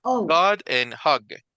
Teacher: no es hag, pero como que si fuera en medio de una A y una O